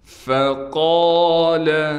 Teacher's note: فحشر فنادى، فقال، قاف کے بعد الف ہونے کی وجہ سے قاف کو کھینچیں گے بھی اور قاف کو موٹا بھی کر کے پڑھیں گے